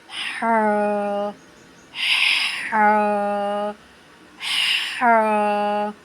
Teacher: حا اور عین کا ایک ہی مخرج ہے، یہ حلق کے آخری حصے سے ہی ادا ہوتا ہے